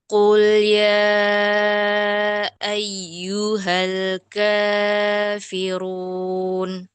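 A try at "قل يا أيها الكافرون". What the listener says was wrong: Hanya kepanjangan Ustazah. Dua harakat saja.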